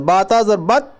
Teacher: اس کی ایگزامپل دیکھو دال پر ہے نا جزم, تا پر ہے تشدید. اب یہاں دال پڑھا نہیں جاتا ہے, یا سیدھا با کو ملائیں گے تا کے ساتھ